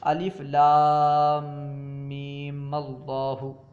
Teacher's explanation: پہلا ساکن اگر الف لام میم کی میم ہو تو اسے فتحہ دیں گے